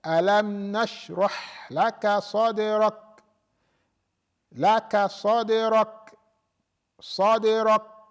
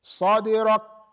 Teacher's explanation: And then the kaf, we said, alam nashrah laka sadrak, laka sadrak, sadrak, without the hams, sadrak, it's completely cut off.